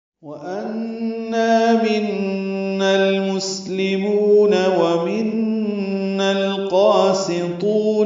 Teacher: ان نون مشدد پہ غنہ اور نا الف مدہ